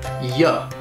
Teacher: So the final sound in how and the initial sound in are will get blended to sound like how are. Then the word you may have, but not always, the reduced schwa sound, and it'll sound like ya.